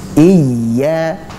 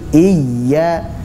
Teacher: dibaca dengan cara nabr atau sedikit meninggikan suara pada huruf ya sehingga tidak menghilangkan ya sukun itu. Jadi sedikit ditekan pada ya-nya, bukan hamzahnya ya, bukan bukan, tapi iya, seperti itu.